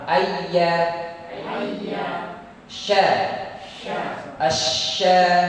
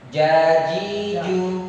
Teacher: lidah bagian tengah pada posisi langit bagian atas. Di sini ada 3 huruf. Huruf ya, huruf sya, dan huruf ja.